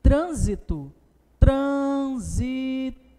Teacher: Perfeito, trissílaba, e a palavra é proparoxítona. Perceba que o acento recai sobre a antepenúltima sílaba.